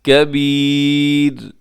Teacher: اب کبیر میں را باریک پڑھی جائے گی جب آپ وقف کریں گے، جب را ساکن سے پہلے یا ساکنہ آ جائے تو پھر اس را کو ہم باریک ہی پڑھتے ہیں